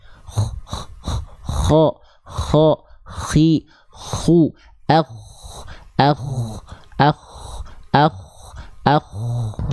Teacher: Tenggorokan paling atas, atau sering kita sebut juga dengan ujung tenggorokan. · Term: adnal halqi